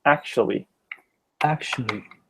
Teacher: it looks like four syllables but in practice when you speak it you only use three